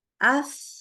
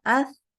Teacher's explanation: kalau kita lihat huruf tsa ini dia ternyata dari hembusan udaranya tuh mengalir keluar